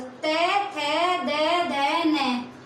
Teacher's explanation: ये दंत्य से बोले जाते हैं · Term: ते वर्ग